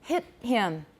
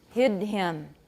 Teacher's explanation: the voiceless stop is longer than the voice stop